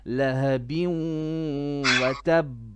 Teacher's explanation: And then you have idgham with ghunna. 2 beats.